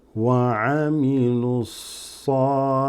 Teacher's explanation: This waw and alif are not read, neither is the alif and lam. You go from here straight to the sad because these are all dropped. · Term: huruf shamsiyah